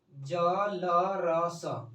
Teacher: अब ये हम लोग का वत्स्य व्यंजन होता है, ठीक है, वत्स्य व्यंजन। देखिए जीवा को ऊपर के वत्स्य कटक को छुआ जाता है